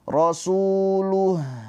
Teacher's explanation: Tuh, terakhirnya ada aliran suaranya. Jangan langsung terpotong. Jangan rasuluh luh tapi lu gitu ya. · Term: Rakhawah